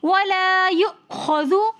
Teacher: یؤخذ کے اندر حمزہ ساکن حالت میں آ رہا ہے تو اس لیے ہم یہاں پر حمزہ کو تھوڑے سے جھٹکے کے ساتھ پڑھیں گے